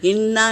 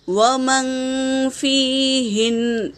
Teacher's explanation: وقف کی حالات میں نون پر تشدید ہے تو ہم اسے ایک ہی بار پڑھیں گے، ہن پڑھیں گے، ہننا نہیں۔